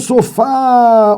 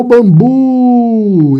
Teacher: olha só como ele estica a palavra, a sílaba sofá